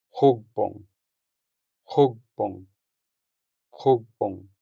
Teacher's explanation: The stress falls on the first U sound, making it sound longer than the second U sound.